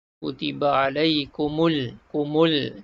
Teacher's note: Maka lam ni dibaca dengan izhar qamari. Jelas dan terang kita sebut lam mati ni, tak dengung.